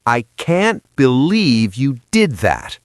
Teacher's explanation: Listeners, did you hear the punch on believe?